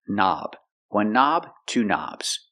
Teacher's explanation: We see the word knob has a K, and the K is silent. Don't pronounce the K. Start with the N sound.